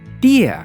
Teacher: 'Tí-a', we also stress the syllable 'tí'